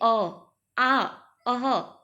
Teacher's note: आ और अह कहाँ से निकलता है, तो ये कंठ की मदद से हम बोलते हैं